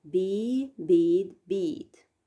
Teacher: Position of the vowel in a word. In the terminal position, a vowel is the longest. It shortens before a voiced consonant and it is the shortest before a voiceless consonant.